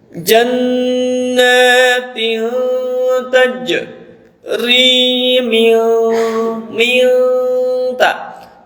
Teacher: Nun mati menghadapi ta, hukumnya adalah ikhfa